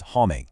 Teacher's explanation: The M just vanishes from the sound entirely, leaving your mouth slightly open as the vowel rings out through your nose.